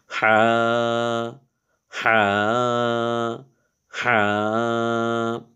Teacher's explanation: এই হা টার উচ্চারণ একটু গলার মধ্যে চেপে করতে হয়